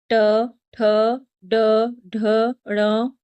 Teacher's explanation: ऐसे वर्ण जिनका उच्चारण करते समय हमारी जीवा मूर्धा को टच करती है। मतलब जो तालु के जस्ट पास में होती है। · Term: मूर्धन्य वर्ण